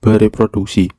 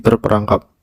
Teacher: Penghilangan fonem r pada morfem ber, per, dan ter dikarenakan bergabung dengan bentuk dasar morfem yang suku pertamanya r ataupun bentuk morfem yang setelah fonem awal diikuti dengan fonem er.